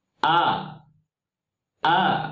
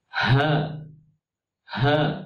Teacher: huruf hamzah jelas tidak mengalir nafas, dan huruf ha itu hamas diikuti dengan air nafas